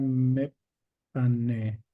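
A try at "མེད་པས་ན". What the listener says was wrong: Mepe na. Yeah, so this sa at the end, so this is pa, and the sa changes the pronunciation to pe.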